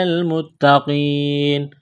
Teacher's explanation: لام کو لام کے ساتھ ملانا ہے، تا میں سختی کریں گے، دبائیں گے تشدید ہے، تا کے اوپر قاف کو موٹا کرنا ہے۔